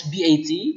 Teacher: the word BUT is pronounced as BAT by using open mid back unrounded vowel